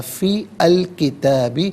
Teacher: کانا ذالکا فی الکتابی، فا کے نیچے زیر ہے، اسے الکتابی کے لام ساکن کے ساتھ ملائیں گے، درمیان میں سے الف یعنی حمزہ کو حذف کریں گے، اور کتابی میں تا کھڑا زبر تا اور تا الف زبر تا دونوں طریقوں سے پڑھنا درست ہے۔